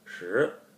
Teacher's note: the word shi in Chinese with a rising and falling tone